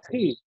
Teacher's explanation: Hi. Bersih hi, dia ya. Enggak ada serak-serak yang menghambat. Kalau ada yang menghambat itu kemungkinan ya itu tempatnya ho itu, Pak, bukan tempatnya ha.